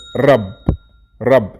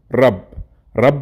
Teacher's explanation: the sound for ra as you can hear me it's rolling r same as in the word rub rub see how i roll